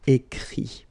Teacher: Remember that even if you've got this final T, you don't pronounce it